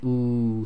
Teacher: the oo sound is made with the rounding of the lips but at the same time the back of your tongue will raise